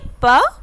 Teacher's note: आप बोल के देखिए, प, आपके दो होठ टच करेंगे उसके बाद ही आपके मुंह से आवाज़ निकलेगी